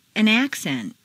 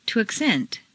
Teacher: change the stress from the first syllable for nouns to the second syllable for verbs. This is a regular, consistent change.